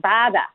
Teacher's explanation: So, for example, in Boston, they're not affected by the northern city shift in the same way Chicago is, but the vowel, as in words like hot, that ah vowel is actually fronted, just like it is in Chicago, in certain words in Boston